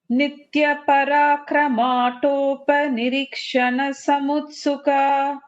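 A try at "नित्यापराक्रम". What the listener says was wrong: So Nitya would be a dirgham.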